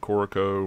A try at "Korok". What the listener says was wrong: Korok. You're adding an O on the end.